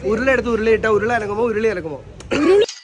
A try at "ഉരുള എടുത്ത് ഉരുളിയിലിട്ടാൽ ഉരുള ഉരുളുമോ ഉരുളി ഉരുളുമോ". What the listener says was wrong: അനങ്ങുമോന്നല്ല, ഉരുളുമോ?